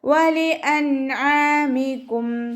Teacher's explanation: നൂനിന് ശേഷം ഇദ്ഹാറിൻ്റെ അക്ഷരമായിട്ടുള്ള അയിന് വന്നു. നൂൻ സാക്കിനയെ വ്യക്തമാക്കി ഉന്ന കൊടുക്കാതെ ഉച്ചരിച്ച് കൊടുക്കുക